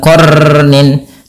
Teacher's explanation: sifat huruf ra itu adalah sifat takrir. Tapi takrirnya jangan banyak-banyak